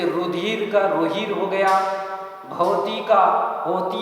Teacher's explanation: पाली भाषा में कहीं कहीं महाप्राण ध्वनियों का परिवर्तन ह में हो गया